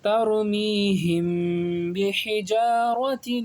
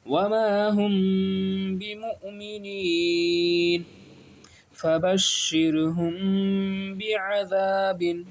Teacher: میم ساکن کے بعد با آ گیا تو یہاں پر بھی غنہ کریں گے · میم ساکن کے بعد کیا آ گیا، با آ گیا، اور با جب آ جاتا ہے تب کیا ہوتا ہے، اخفاء شفوی، یہاں پہ غنہ کر کے پڑھتے ہیں